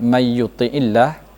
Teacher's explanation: karena huruf nun sukun ini bertemu huruf ya bertasydid, dibaca harus didengungkan atau dimasukkan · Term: idgham bi gunnah